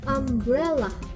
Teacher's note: Secondary stress is on the first syllable and primary stress is on the second syllable